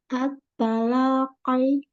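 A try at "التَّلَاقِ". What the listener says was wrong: Jangan dibanting qafnya. At-talaqi. Qi. Jangan qi, jangan qi. Qi. At-talaqi.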